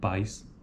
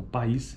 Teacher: pais é um ditongo como uma vogal e um Glide uma semivogal em oposição uma sequência de vogais na segunda palavra então país é apenas uma sequência de vogais